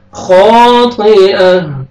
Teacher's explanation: नासियतिन काज़िबतिन खातिअह, अलिफ मद्दा, अलिफ से पहले फतहा, खा को आपने खींचना है और मोटा भी पढ़ना है। वक्फ की सूरत में ता को हा में चेंज करेंगे, खातिअह नासियतिन काज़िबतिन खातिअह फलयदउ नादियह, फल, फा को लाम के साथ मिलाना है और लाम को आपने हिलाना नहीं है।